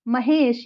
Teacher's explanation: आ और ई इन दोनों का अपना रूप बदल गया उसमें विकृति आ गई और वह बन गया ए